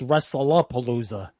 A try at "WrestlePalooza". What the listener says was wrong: It's not It's neither of those. It's WrestlePalooza. It's not Wrestle-a-Palooza, and it's not Wrestling Palooza. You said Wrestle-a-Palooza.